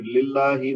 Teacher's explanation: لام کے نیچے چونکہ زیر ہے تو اللہ کا لام جو ہے وہ باریک پڑھا جائے گا